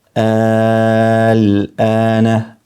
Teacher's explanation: Kjo është el-ana, duhet të zgjatet 6 herë